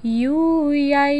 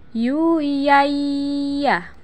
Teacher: dengan nun mati tanwin yang berwarna saat bertemu dengan huruf ya tahan suaranya dan keluarkan sebagian dari rongga hidung kita